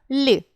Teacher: Ль приголосний, сонорний, м'який.